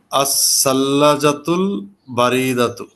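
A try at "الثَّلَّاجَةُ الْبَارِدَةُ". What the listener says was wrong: আর আপনার আরো এই পড়াটা ভুল হয়েছে। আস-সাল্লা, সা না, সিন না, এটা সা। আস-সাল্লাজাতুল বারিদাতু, আপনি পড়েছেন বারিদাতু, এটা কিন্তু ভুল। সা দিয়া।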